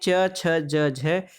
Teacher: ये व्यंजन ध्वनियाँ स्पर्श संघर्षी कहलाती हैं